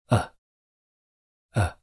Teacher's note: we produce the Sound by putting our tongue in a relaxed middle Central position in our mouths · some pronunciation guides call it a mid Central vowel sound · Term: neutral vowel sound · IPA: /ə/